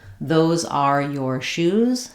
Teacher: Shoes is the important word here. It's what's stressed.